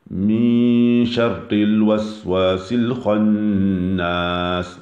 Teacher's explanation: Donc le ra, quand il vient avec une kasra, il est muraqqaq. C'est-à-dire qu'il est doux.